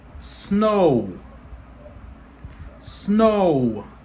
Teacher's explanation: C'est O. Ça encore c'est un diphthong. C'est O et puis OU. OK? Leur combiner ensemble, ils viennent faire O.